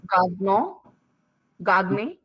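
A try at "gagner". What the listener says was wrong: मैंने बोला था जी प्लस एन साथ में होते हैं तो जी को नहीं पढ़ते, याद है? जी प्लस एन या एन प्लस जी, मोन्तान्य, गान्य, ये भी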